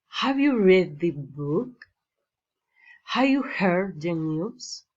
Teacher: general questions rising intonation